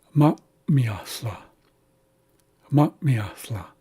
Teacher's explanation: you say ma and then you hold your breath very briefly here after the a and then the rest of it